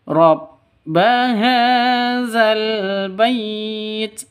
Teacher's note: Rabbaha panjang dua ketukan ini karena ada tanda berdiri di atasnya atau harokat fathah berdiri atau ada alifnya di atasnya itu sama aja ya, karena sama-sama mad asli ya, mad tabi'i.